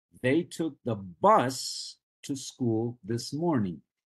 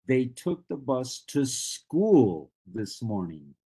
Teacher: the same sentence can be shifted a little bit to emphasize something different in pronunciation and intonation and in this case we are highlighting the word school